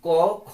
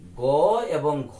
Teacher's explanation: ক খ এগুলো উচ্চারণ করার ক্ষেত্রে স্বরতন্ত্রী একটু কম কাঁপে, এই জন্য এগুলোকে বলা হয় অঘোষ ধ্বনি। আর গ এবং ঘ এগুলো একটু বেশি কাঁপে, এই জন্য এগুলোকে বলা হয় ঘোষ ধ্বনি।